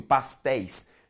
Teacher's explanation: Veja comigo. Pastéis, ditongo aberto, ei em posição oxítona